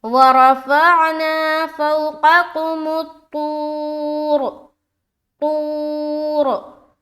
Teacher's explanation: रा को मोटा करते हुए स्टॉप करें